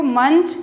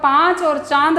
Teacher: मंच केवल नाक से आवाज आ रही है और जब आप पांच और चांद बोलेंगे तो नाक और मुक्त